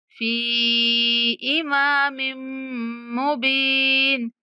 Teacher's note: फी को 3 सेकंड तक खींचेंगे